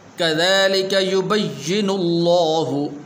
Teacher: لفظ اللہ کو پر کر کے پڑھیں گے اس لیے کہ اس سے پہلے حرف کے اوپر پیش ہے